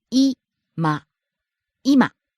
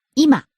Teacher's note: Starts high, ends low.